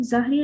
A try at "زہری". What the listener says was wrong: زہری، امام زہری ہیں، یہ ظاہری نہیں زہری.